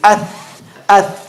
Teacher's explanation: Tip of the tongue between the top and bottom teeth.